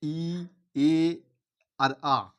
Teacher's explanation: ই এ আর আ এইগুলো উচ্চারণ করার সময় আমাদের মুখটা বা ঠোঁট দুটো একটু প্রসারিত হয়ে যাচ্ছে অর্থাৎ বেড়ে যাচ্ছে কি হসই এই যে ই উচ্চারণ